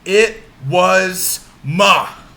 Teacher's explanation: We have two unstressed syllables followed by one stressed. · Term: anapest